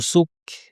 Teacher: নুসুক এখানে একটু বাতাস আপনারা শুনতে পাচ্ছেন এই বাতাসের আওয়াজটা কিন্তু থাকতে হবে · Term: কাফ সাকিন